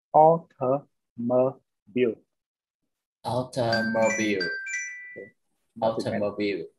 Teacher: Trọng âm nằm ở đầu o. Như vậy tất cả những chỗ còn lại nó đều yếu yếu, nó có xu hướng là âm yếu.